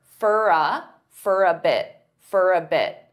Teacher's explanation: many native speakers will combine all 3 of these together and they'll pronounce for as more of an unstressed fur.